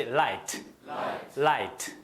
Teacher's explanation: L 사운드예요. 혀가 살짝 치는 그런 사운드를 냅니다